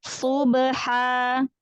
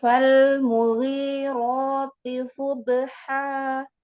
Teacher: Iya, ba sukunnya qalqalahnya disempurnakan